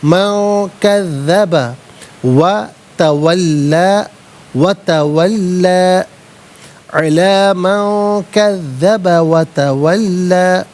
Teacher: من میں نون ساکن ہے، اس کے بعد کاف حرف اخفا ہے تو نون ساکن کو اخفا کے ساتھ پڑھا جائے گا